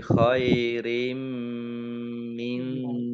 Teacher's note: Kasroh tanwin bertemu dengan huruf mim, bacaan idgham bi gunnah. Idgham masuk, bi dengan gunnah mendengung.